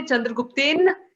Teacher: If you say Chandragupten, this is a very typical Hindi error of eating up the vowels at the end.